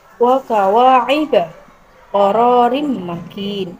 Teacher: Bunyi huruf kaf seperti huruf qaf, namun pangkal lidah diturunkan.